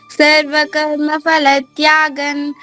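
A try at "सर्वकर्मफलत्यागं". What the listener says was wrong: ఇక్కడ మూడో చరణంలో సర్వకర్మ ఫా కాదమ్మా. ఫా అంటే పై పెదవి కింద పెళ్ళకి టచ్ చేసి కొంత గాలి బయటకు వదిలేస్తే ఫా వస్తుంది. అలా కాదు, రెండు పెదవులు మూసుకోవాలి. ఫలత్యాగస్ అదే ఫలత్యాగన్.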